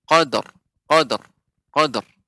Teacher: kalau qad maka ra-nya hilang.